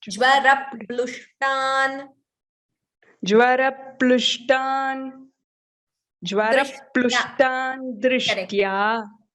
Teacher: There is a dvitvam between ra and pa.